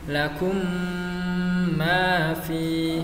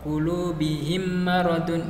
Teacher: Ada yang mengatakan idgham mimi, ada yang mengatakan idgham mislain. Kemudian cara membacanya, mim rangkap ditasydidkan dengan mendengung.